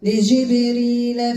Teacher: عندك الباء القلقلة والراء مرققة